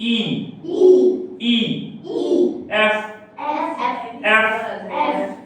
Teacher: that is the labiodental sound এটা বুঝবে না তোমরা বাট এটা মনে রাখো এই দাঁতটা এই ঠোঁটের সঙ্গে লাগবে